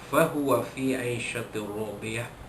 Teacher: Idgham bila gunnah, memasukkan bunyi tanwin ke dalam huruf ra tanpa dengung dan masuknya lengkap, idgham kamil, ya.